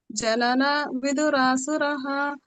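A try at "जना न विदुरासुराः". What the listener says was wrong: ಜನನ ದೀರ್ಘ ಇದೆ ನ ಜನ ಅಂತಿದೆ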